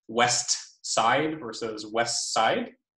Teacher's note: a classic example of this is a word final TD deletion in coda clusters in English. This is an optional or variable process that gives us alternations like west side versus west side.